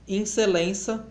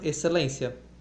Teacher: queda ou nasalização da vogal atônica inicial